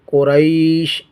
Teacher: قاف پیشکو، را یا زبر رئی کوریی، شین دو زیر شن کوریشن، وقف کی حالت میں قریش، یا حروف لین میں سے ہے اور اس کے بعد سکون عارضی ہے، تو یہاں پر بھی مد لین عارض ہوگا.